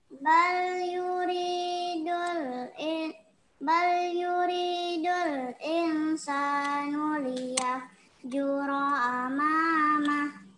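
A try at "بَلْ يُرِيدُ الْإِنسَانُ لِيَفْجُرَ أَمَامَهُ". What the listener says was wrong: Nah, in-nya itu dengungkan lagi nak. Pada kata insanu, in-nya itu dengungkan lagi. Bal yuridul insanu liyafjura amamah. Insanu, in-nya itu dengungkan lagi.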